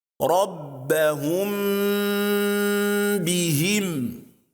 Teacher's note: If Meem Saakinah is followed by ba, we apply ghunnah on Meem with a length of 2 vowel counts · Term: al-ikhfa